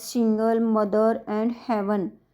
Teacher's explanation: मतलब दो होते हैं उनमें थोड़ी सी मुश्किल होती है, कठिनाई होती है पहचानने में कि कौन सा प्राइमरी स्ट्रेस पहले पे लगेगा या दूसरे पे लगेगा। Some disyllabic words such as single, mother and heaven are stressed on the first syllable